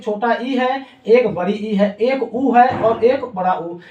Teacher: इनको बोलने पे मुख द्वार बहुत कम खुलता है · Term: संवृत स्वर